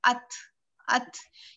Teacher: ता में जो है ना हल्की सी हवा निकलती है ता में, इसलिए इसकी साउंड हो जाती है था की तरह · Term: हम्स